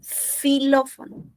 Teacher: Xilófono, suena S, a una fricativa alveolar.